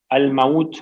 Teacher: الموت میں واو لین ہے، اس کو نرم پڑھتے ہیں